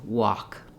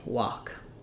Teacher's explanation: walk, we have the ah vowel, and my letter L is silent.